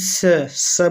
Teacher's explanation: एक प्रकार का रगड़ता हुआ वायु के साथ वर्ण निकलता है